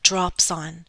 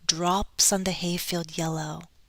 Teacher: i'm linking consonant to vowel sound there